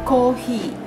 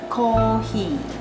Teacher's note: We don't have F and R sound in Japanese, so any sound for F in English probably go to ha, he, hu, he, ho.